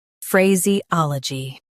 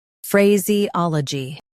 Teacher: Stress ah in US, ol in UK.